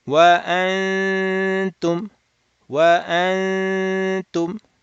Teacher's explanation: Open the nasal cavity. Do 2 harakat, nasal sound, while holding near ta. Then step number 3, do the dhamma on the 2. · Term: Ikhfa